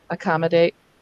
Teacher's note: as we say it quickly, we do tend to slur or schwa the initial A